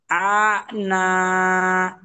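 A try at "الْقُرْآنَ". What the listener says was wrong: টান নেই, টান নেই, না টান নেই।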